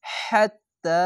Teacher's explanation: এই হা উচ্চারণ করতে গেলে অবশ্যই এরকম সাউন্ড হবে, বাতাস বের করে একটু মোটা করে গলা চিপে মতো পড়বেন